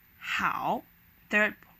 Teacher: knee is second tone so it slightly goes up how is the hard third tone where you gotta press your voice down a little bit and then bounce it up again